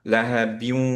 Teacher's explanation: সো পুরো discussion মনে রাখা লাগবে না, শুধু এইটুকু খেয়াল রাখলেই চলবে যে আমরা লাহা বিউ, এভাবে এখানে দুইটা ওয়াও আছে, প্রথম ওয়াওটা সুকুনে, সেই ওয়াওটাকে ধরে রাখতে হবে, গুন্না সহ পড়তে হবে।